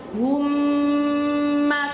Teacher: Kenapa dengungannya panjang? Karena ada tasdidnya. Ya, karena ada tasdidnya. Jadi dengungannya harus panjang.